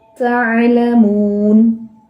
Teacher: تا کے اندر تھوڑا سا آخر پہ سانس کا اخراج ہوتا ہے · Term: ہمس